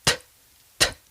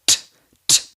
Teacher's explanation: The only real difference is that when you say the letter T, you don't use your vocal cords. So again, the very tip of your tongue needs to rest between your top and bottom teeth for the beginning of the sound, and then it just pulls away a little bit as the air comes out.